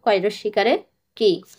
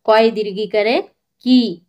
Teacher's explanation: রস্বই এবং দীর্ঘইর উচ্চারণ একই, তবে রস্বই হয় হালকা করে এবং দীর্ঘই হয় একটু দীর্ঘ করে